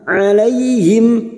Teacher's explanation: alaihim fathah bertemu Ya Sukun kita lunakkan